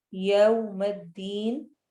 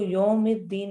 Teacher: خاص طور پہ واو لین کو پڑھتے ہوئے ہمارے ہونٹ مکمل طور پہ گول ہوتے ہیں